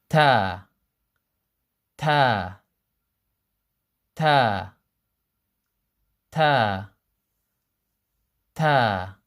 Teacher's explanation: ta comes from the same place as the T in the English language, except that it's more flat on the roof of the mouth. It's more flat than the English ta.